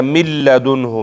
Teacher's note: دوه حروف دي لام او را چې هغې کې به ادغام کېږي خو بغیر د غنې نه به کېږي لکه من لدنه. من لدن کې نون ساکن اوس په لام کې مدغم شوی. په دې کې پوزې ته د ذرې په اندازه آواز هم نه ځي بغیر غنه کې ځکه غنه پکې شته نه.